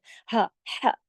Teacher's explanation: ये गले से पढ़ा जाता है ना, गले से हरफ़े हल्की है